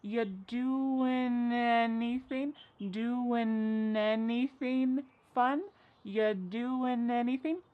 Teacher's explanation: And then the next word, anything, we sometimes drop the A and we're going to push those two together because there's two N sounds side by side. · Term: linkings